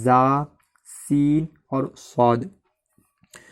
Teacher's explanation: ان کا مخرج ہے زبان کی نوک اور ثنایا سفلی اور ثنایا علیہ کے درمیان۔ جب ثنایا علیہ اور ثنایا سفلی ایک دوسرے سے ملتے ہیں، اس کے بعد جب زبان اس جگہ پر جا کر لگتی ہے تو ادا ہوتا ہے زا، سین اور صاد۔